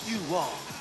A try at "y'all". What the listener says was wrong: It ain't you all, it's y'all. Y'all. Y'all.